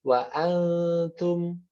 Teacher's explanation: gunnah dari ikhfa tersebut jadinya tipis